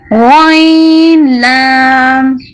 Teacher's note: نقطے والا غین موٹا پڑا جائے گا اور حلق کے اوپر والے حصے سے ادا ہوگا